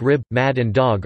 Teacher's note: the final /b/, /d/ and /g/ in words like rib, mad and dog are fully devoiced.